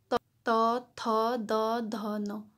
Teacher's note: ये जो त वर्ग है ये जो है हमारे जीभ के अग्र हिस्से जो है दांतों को टच करती है